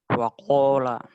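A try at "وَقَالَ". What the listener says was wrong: Bukan kola, bukan lah, tapi la. Istifal, la. Jangan la, tapi la. Waqala.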